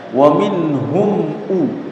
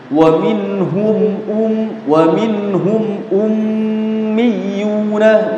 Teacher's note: Jadi mim sukunya dibaca jelas tanpa ditahan.